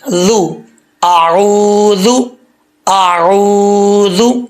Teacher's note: زبان کی نوک اوپر والے دانتوں کے نچلے حصے سے لگے گی تو یہ ذال پڑھا جائے گا، ذال زبان کا جو سرا ہے، ٹھیک ہے، ذال، ذال پیش، ذو، اعوذ، اعوذ، اس کو اچھے طریقے سے ریوائز کرنا ہے۔